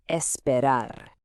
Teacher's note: you want a nice soft R sound at the end, not that hard American R sound